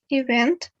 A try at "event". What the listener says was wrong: So once you pronounce it correctly, event. But the second, I mean, the second time was correct, but the first time was wrong. So the stress is on the second syllable.